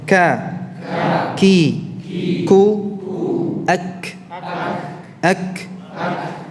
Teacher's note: Sedangkan kaf itu dari pangkal lidah, namun yang sejajar dengan langit-langit antara yang lunak dan yang keras.